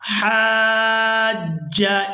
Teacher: ہا کو الف مدہ اور مد کی وجہ سے کھینچتے ہوئے جیم مشدد کے ساتھ ملانا ہے